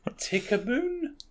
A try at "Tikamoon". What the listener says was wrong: There's no B in there. It's a moon. You said Tikaboon.